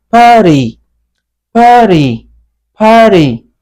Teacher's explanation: we are going to make the T sound soft, flat T, soft D